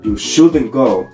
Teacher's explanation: the modal verb shouldn't becomes important to express the contrasting meaning. So it receives stress. In other words, while content words normally carry the stress, function words can take it when they are essential for the message the speaker wants to communicate. · the modal verb shouldn't becomes important to express the contrast in meaning, so it receives stress.